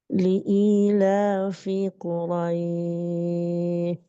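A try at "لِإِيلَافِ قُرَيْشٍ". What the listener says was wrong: Kalau saya nggak tahu apakah jaringan atau kendala, tapi di akhir saya lebih dengarnya suaranya seperti ta ya Bu ya. kalau ini kan huruf shin ya Bu ya, huruf shin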